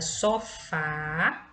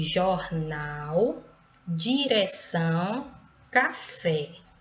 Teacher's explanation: a última sílaba é pronunciada com mais intensidade por isso que se trata de uma oxítona